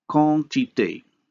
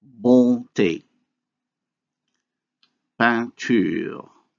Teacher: instead of having two segments, that is a vowel and a nasal consonant, we end up having only one, a nasalized vowel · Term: vowel nasalization